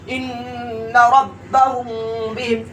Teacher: اخفاء شفوی ہوگا. اور میم ساکن کے بعد با آیا تو گناہ کے ساتھ اخفا ہوگا